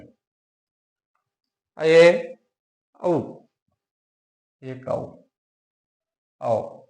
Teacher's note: ये 2 स्वर ऐसे हैं, ऐ और औ, जिनका उच्चारण करते समय इनकी अपेक्षा यानी संवरित स्वरों की अपेक्षा थोड़ा सा अधिक मुंह खुलता है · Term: अर्ध संवरित स्वर